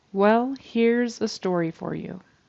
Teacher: I'm hearing an S sound instead of a z on the end of hears